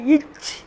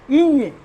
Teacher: இதே இடத்தில் இச்சும் பிறக்கிறது இஞ்சும் பிறக்கிறது, ஆனால் வல்லோசை மெல்லோசை.